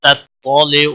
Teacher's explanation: پہلا تا باریک ہے، دوسرا تا موٹا پڑھا جائے گا